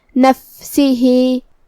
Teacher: ہمیں فا کو ہمس سے پڑھنا ہے. ہمس کا معنی ہے کہ حرف کی آواز ایسے کمزور ہو کہ اس میں پستی پائی جائے.